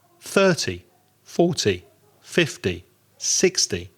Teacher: with the other numbers the zeros put the stress on the first syllable